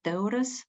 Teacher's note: the second syllable U is not exactly the same as in the first syllable, so it's kind of reduced. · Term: reduced vowel